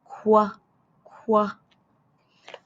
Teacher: I could feel the back of my tongue tap the roof of my mouth. Then, quickly, my lips rounded and air came out.